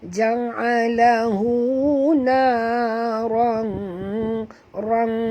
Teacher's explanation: Ja'alahu naran, na 2 harakat, rang tanwin bertemu dengan qaf, kita kena sorokkan bunyi tanwin ke dalam qaf disertai dengung 2 harakat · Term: ikhfa hakiki